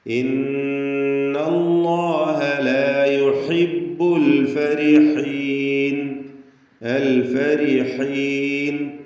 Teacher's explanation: റാഇന് തർക്കീഖാണ്, കസ്റായതുകൊണ്ട്